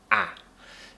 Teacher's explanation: This one's easy. Tongue is at the very bottom of the mouth, right near the bottom